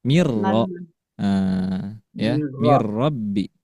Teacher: masih diidghamkan, dileburkan bunyi nun atau tanwinnya, tetapi bila gunnah tidak digunnahkan atau tidak didengungkan, tidak ditahan, tapi masih melebur